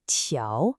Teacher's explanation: 条, is a second tone. It goes up